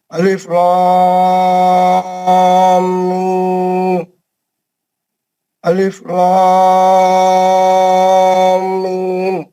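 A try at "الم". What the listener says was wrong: میم بھی کھینچنا ہے، میم جس طرح لام آپ نے لمبا کھینچا ویسے ہی میم بھی. ہاں 6 حرکت.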